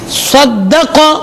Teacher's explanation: قاف موٹا ہے، صاد موٹا ہے، بیچ میں کیا ہے؟ دال. اس کو موٹا نہیں پڑھنا.